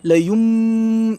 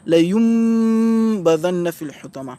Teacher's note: c'est comme si c'est un mime soukouné qui rentrait à la place du noun. La yum, la bouche se ferme. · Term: ikhfa